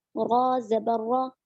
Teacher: را کو پر پڑھیں گے، موٹی آواز سے پڑھیں گے کیونکہ را پر زبر ہے